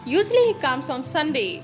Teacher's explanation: So here Sunday is here a rise tone. So it is an example of fall rise tone.